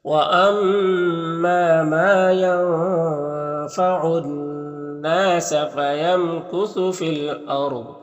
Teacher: را کو پر پڑھیں گے، ضاد حروف مستعلیہ میں سے اسے بھی پر پڑھیں گے